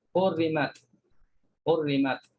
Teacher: Kalau hafs kita kena baca dengan izhar, jelaskan ta mati ni.